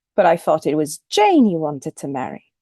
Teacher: thought is the first stress syllable in this utterance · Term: the head